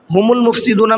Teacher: ہم المفسدون، ہم المفسدون میں یہ دیکھیے الف ہے، یہ الف نہیں پڑھا جائے گا، میم کو ڈائریکٹ لام میں ملانا ہے